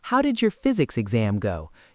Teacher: your voice should naturally fall at the end because it's a how question. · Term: intonation